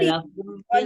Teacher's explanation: lamnya juga kan di tawasud ya, bainiyah ya. Jadi harus dialirkan dulu. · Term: lam sukunnya